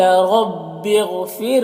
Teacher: गैन हुरूफ़ मुस्तालिया में से है, और राय साकिना से पहले फ़ा के नीचे ज़ेर है, तो रॉ को बारीक पढ़ेंगे